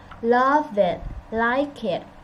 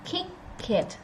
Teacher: So we link it from the consonant to the vowel.